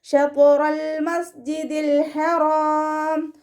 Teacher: ഹ മഖ്റജ് വരുന്നത് തൊണ്ടയുടെ മധ്യഭാഗമാണ്. സൗണ്ടിന് ഹാഇൻ്റെ സൗണ്ടായി പോവാതെ നോക്കുക.